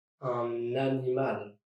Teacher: dragging the end of un to the beginning of animal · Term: liaison